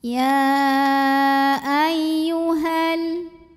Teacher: Maka cara bacanya dipanjangkan haknya 2 harokat saja. Tapi jika wasol ya ayyuhal haknya dibaca pendek, madnya gugur, namanya takholus bil hadfi.